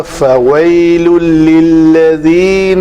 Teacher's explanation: ادغام کامل کا مطلب ہے نون ختم کر دینی ہے اور آگے لام کے اوپر اس کو لام کو مشدد پڑھا جائے گا. پوری کی پوری تنوین اس لام میں چلی جائے گی, اس لیے یہ 2 لام ہو جائیں گے, 2 حروف ہو جائیں گے. · فَوَيْلٌ تھا تو آگے لام حروف یرملون میں سے ہے, تو یہاں پہ اس کا ادغام کامل ہو جائے گا. نون تنوین کی نون پڑھنے میں 0%.